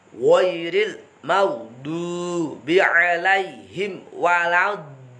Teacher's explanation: Lam tasdid bukan hunah musyaddadah. Jadi tidak boleh didengungkan. Langsung ditekan dan lepas.